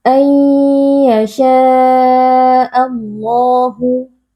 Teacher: Lam jalalah dibaca dengan tebal karena lafaz jalalah ini sebelumnya berharokat fathah yaitu ayyasha'a sehingga lamnya kita baca dengan tafkhim atau dengan tebal.